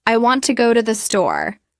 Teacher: For example, in the sentence, I want to go to the store, the words go and store get the stress. The little words in between are said quickly.